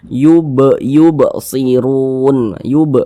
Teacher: sukun asli ini sukun maka itu kita pantulkan cara bacanya nih huruf ba ni sukun ni tanda sukunnya kita pantulkan · kan kita tidak berhenti di huruf ba yubsirun Nah maka ini dinamakan Qalqalah kecil Qalqalah Sugra karena dia berada di tengah bacaan